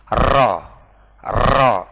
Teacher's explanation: penting ada pengulangan getaran Jadi dua maksimal 3 jangan sampai lebih · Anda boleh digetarkan ujungnya karena ro ini bersifat mutawasit mutawasit itu sedang-sedang saja ya nggak boleh terlalu kencang